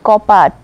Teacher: কবাটটা হয়ে যাচ্ছে কি কপাট, বটা চেঞ্জ হয়ে পুরো প হয়ে যাচ্ছে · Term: ব্যঞ্জন বিকৃতি